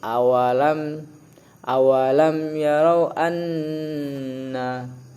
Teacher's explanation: Kemudian yang kedua ada idgham bi gunnah atau ma'al gunnah di situ, yaitu nun bertasdid. Cara membaca ditahan serta dengung.